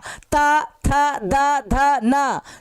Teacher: ध न जब भी बोलोगे तो दांत देखो जीभ को दांत जो जीभ है वो दांत में आके धक्का मारा